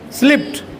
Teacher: voiceless sound के बाद अगर ईडी आएगा ट बन जाएगा